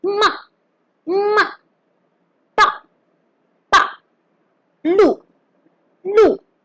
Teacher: Our fourth tone starts from the fifth one and then drops down to the first one. It is also known as the falling tone.